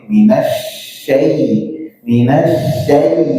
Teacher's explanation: syin itu adalah huruf yang ee makhrajnya ada di tengah lidah bertemu dengan langit-langit